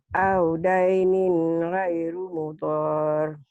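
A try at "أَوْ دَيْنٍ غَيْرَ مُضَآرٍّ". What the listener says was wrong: Goiro, bukan goiru. Goiro. Audainin goiro mudhar.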